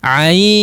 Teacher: Ain mad yang madlin yang dimiliki oleh huruf ain ini dipanjangkan dulu sampai 6 harokat atau 4 harakat boleh ya, khusus huruf ain.